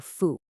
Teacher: A common mistake is letting that first tone on i drop. Keep it high and flat, i, and then go up sharply for fu